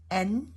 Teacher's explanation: Tongue goes up. N to the roof of the mouth near the alveolar ridge.